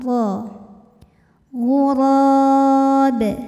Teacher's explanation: ra dibunyikan secara tafkhim karena ra berbaris fathah, maka kita bunyikan dengan tebal